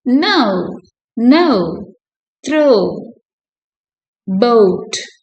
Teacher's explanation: இது எப்படின்னா o sound first இருக்குது அடுத்து o. The diphthong o begins with a mid-central vowel and glides towards a high back rounded vowel. இப்போ mid-central vowel இருந்து high back rounded vowel க்கு போகுது, producing a smooth transition.